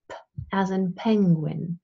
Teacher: we stop the airflow with the lips. So we close our mouth, we have it closed for a split second, and then we open it up again, ping, and then we release the airstream.